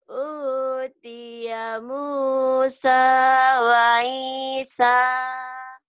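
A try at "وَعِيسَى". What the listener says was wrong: Ainnya mana? Wa Isa. Utiya Musa wa Isa.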